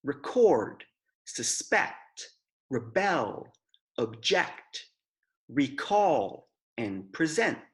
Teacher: when the word is a verb the stress is put on the second syllable